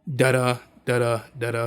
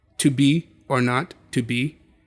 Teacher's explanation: Iambic pentameter being, iambic being unstressed, stressed.